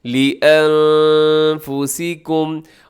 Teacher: نون ساکن کے بعد یہاں فا ہے تو آپ یہاں پر کیا کیجیے گا؟ اخفا کیجیے گا